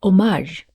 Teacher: One is homage, the stress is on the second syllable